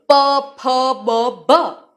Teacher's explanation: બે હોઠનો પૂરેપૂરો ત્યાં સ્પર્શ થાય છે. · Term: ઔષ્ઠીય